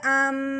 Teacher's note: ساتھ ساتھ ایک الف کے برابر لمبا غنہ کرنا ہے